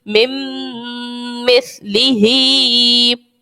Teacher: یہاں پر بھی ادغام کا قاعدہ ہوگا، ادغام مع غنہ ہوگا کیونکہ یہاں پر میم ہے نون ساکن کے بعد اور میم میں غنہ کرتے ہیں ادغام کے اندر.